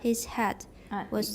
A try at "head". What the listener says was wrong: It sounds like hat. Head. You're going hat. Head.